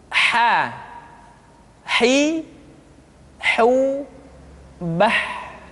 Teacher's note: Huruf ha dikeluarkan dari tengah-tengah tenggorokan. Tengah-tengah tenggorokan.